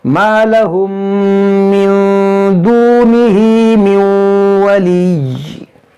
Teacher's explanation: मीम साकिन के बाद मीम है तो यहाँ पर इदगाम शफवी होगा